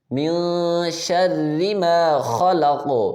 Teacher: را باریک ہوگی، اس کے نیچے زیر آ گئی ہے